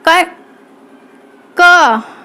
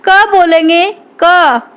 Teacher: कै वर्ग हमारा बोला जाता है कंठ से।